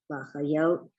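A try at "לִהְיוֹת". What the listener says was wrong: Hayot. It's a hey. The hayot.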